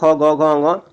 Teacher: क ख ग घ ङ, ये आपके कंठ या कंठस्थ होते हैं